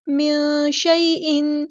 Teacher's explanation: نون ساکن کی آواز کو یہاں ہم نے چھپا دینا ہے کیونکہ یہاں پہ اخفا ہو رہا ہے ، نون ساکن کے بعد شین آیا ہے، شیء یا لین